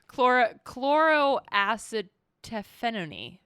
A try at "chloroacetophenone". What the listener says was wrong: You're kind of trailing off there. I feel like you get the first half and then you have a light seizure. Just a light seizure.